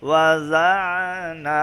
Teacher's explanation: ضاد کے بعد جو عین ہے اس کو آپ نے ملانا ہے، تو ملاتے ہوئے عین کو صاف کر کے پڑھنا ہے